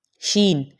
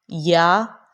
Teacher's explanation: جب ہم یا پڑھتے ہیں، زبان کا جو بیچ والا حصہ ہے اور اوپر کا جو تالو ہے اس کے بیچ میں اور تھوڑا سا گیپ ہوتا ہے، مطلب جب ہم شین پڑھتے ہیں تو تھوڑا گیپ ہوتا ہے، اور جب ہم یا پڑھتے ہیں تو اس ٹائم تھوڑا زیادہ گیپ ہوتا ہے